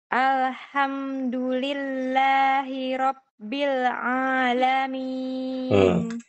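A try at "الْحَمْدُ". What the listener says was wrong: ini ada masalah di lamnya. Lamnya qalqalah. Al-ha. Al-ha. Alhamdu. Alhamdu. Enggak, ikut itu alhamdu saja.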